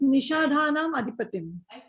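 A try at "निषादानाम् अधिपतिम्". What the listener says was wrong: Nishadanam Adhipatim. Nishada eva. Dakara mula shloke Nishada eva bhavishyati. Atra dakara bhavishyati.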